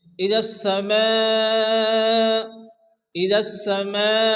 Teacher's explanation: হরফে মাদের পরে হামজা একই শব্দের মধ্যে আসছে, মধ্যে মুত্তাসিল হবে, চার আলিফ পরিমাণ টেনে পড়তে হবে।